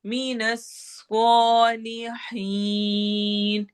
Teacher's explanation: स्वाद सिटी वाली आवाज होगी और साथ ही मोटा भी पढ़ेंगे